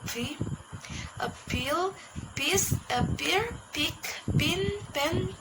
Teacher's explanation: A bilabial sound formed by both lips coming together. Example: voiceless bilabial stop sounds